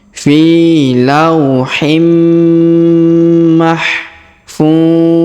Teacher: tanwin in bertemu dengan mim bertasdid maka tanwin innya menghilang melebur ke huruf Mim bertasdid yaiuh ditahan dan ditekan dan didengungkan du du sampai t harakat